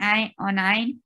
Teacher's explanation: ayn should be from your throat very clearly